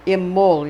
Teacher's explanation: Imbolg is I-M-B-O-L-G, pronounced Imbolg, or Imbolg is how they pronounce it, with a slight unstressed vowel between the L and the G